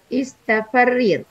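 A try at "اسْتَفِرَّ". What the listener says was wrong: Istafirro. Sidanya menjadi fathah.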